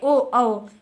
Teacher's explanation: कंठ और ओष्ठ मिला करके बनते हैं आपके ओ और औ। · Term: कंठोष्ठ